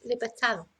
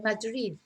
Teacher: quite often you will hear this th sound for a D